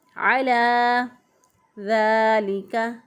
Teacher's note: وَإِنَّهُ عَلَى ذَلِكَ، عَلَى، عین کو وسط حلق سے ادا کیا، لام کھڑی زبر لا کو ایک الف کے برابر لمبا کر کے ہم نے پڑھا